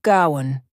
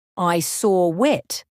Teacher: native speakers often add a slight W sound in between, making it sound like gowan.